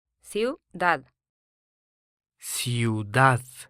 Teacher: Now the Spanish for city or town is ciudad, ciudad, This word ends in a D, which is not a nose letter, that is, an N, an S, or a vowel, so the last syllable is stressed